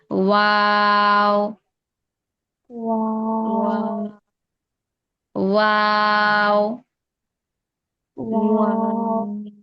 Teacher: ওয়াও ঠোঁট গোল করে ছড়িয়ে আবার গোল করব